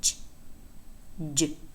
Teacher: Ch is voiceless, whereas j is voiced.